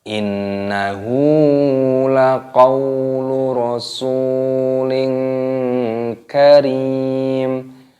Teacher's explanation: nun tasdid ini dibaca gunnah, yaitu dibaca berdengung, dan hunya dibaca panjang.